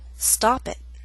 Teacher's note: that's a true T with not much puff of air and a glottal stop